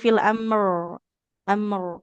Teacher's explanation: huruf ro sifat getarnya dia enggak boleh hilang ya. Enggak jadi fil amr amr jadi biar getar ee lidahnya ditempelkan ke ini ke gusi ya ujung lidah menempel ke gusi di situ makhraj dari huruf rnya.